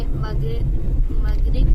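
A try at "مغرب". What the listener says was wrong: गाफ नहीं है वो, गाइन है, मगरिब नहीं है वो। आपको गाफ और गाइन में फर्क नहीं पता?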